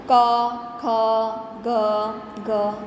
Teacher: કંઠ વ્યંજન એટલે કે જે ગળામાંથી બોલાતું હોય તે.